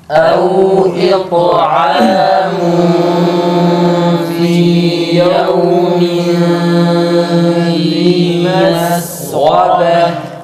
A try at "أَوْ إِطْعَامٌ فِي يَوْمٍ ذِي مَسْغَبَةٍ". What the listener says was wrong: Bana iki tane ihfa gelmiş. İkisinin uzatma miktarı birbirine eşit olması lazım. Birincisinin tam, ikincisini ise yapmadan geçiyorsunuz. Bundan dolayı da ses tonları bozuluyor.